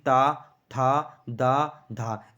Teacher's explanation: दोस्तों जो ताब के व्यंजन है उन्हें जब हम बोलेंगे तो हमारी जीभ जो होगी वह दांतों से टच होगी · जीभ हमारी दांतों से टच होती है, इसलिए इसे दंत व्यंजन कहते हैं